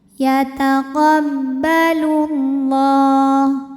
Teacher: Yataqabbalullah [bernyanyi] la hukumnya mad thobi'i muqaddar. Karena lam berbaris fathah panjang maka huruf lam dipanjangkan dua harakat.